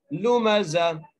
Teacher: جہاں پر ایسی تا لکھی ہوئی آ جائے وہاں پر جب وقف کرتے ہیں تو تا کو ہاں میں تبدیل کر دیتے ہیں اور ساکن کر دیتے ہیں